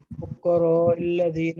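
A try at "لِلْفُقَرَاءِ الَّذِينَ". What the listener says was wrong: بیٹا للفقراء الذین، لل کو نہیں کہا،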